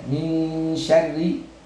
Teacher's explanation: ketika ra-nya berbaris dengan kasrah, berarti dia harus terbaca dengan tipis